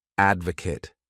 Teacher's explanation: The next wonderful verb is to advocate. This word has 3 syllables, and the stress is on that first syllable